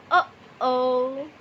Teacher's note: membuka dan menutup lalu membuka lagi dan membentuk glotal stop